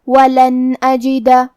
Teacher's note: الف حروف الاظہار میں سے ہے اور اظہار کا معنی ہے ظاہر کرنا، تو ہم یہ نون کو ظاہر کرتے ہوئے اور بغیر غنہ سے یہ حکم کو ادا کریں گے